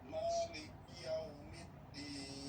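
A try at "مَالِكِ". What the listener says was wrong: Dari li ke kaf. Maliki. K-nya itu maliki. Perhatikan di sana, kalau enggak terbaca menjadi seolah-olah bunyinya begini, Malik Kia. Jadi ada seperti kayak tasdid. Malik Yaumid, Mali, li. Coba bersihkan lagi, Mali. Ya, Maliki.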